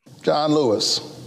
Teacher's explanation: the way he stresses it is by just letting it be low · he pauses before his name and then just says it down low